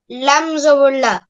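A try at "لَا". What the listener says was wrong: লামের সাথে একটা আলিফ আছে না, লাম আলিফ। তাহলে বলো কি হবে? হ্যাঁ, কেন টানছো কেন বলো তো?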